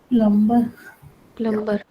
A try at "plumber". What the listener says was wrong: The B is silent. Yeah, the B is silent. M और B जब साथ में आते हैं ना, you have to silence the B. And only the M is pronounced.